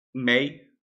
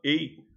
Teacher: ambas as pronúncias, com som aberto, mei, som fechado, ei, ambas estão certas